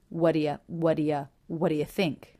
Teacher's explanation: those three unaccented words are all linked together low in pitch very smooth